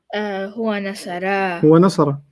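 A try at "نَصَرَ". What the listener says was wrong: Not nasara. Don't make it long. It's short.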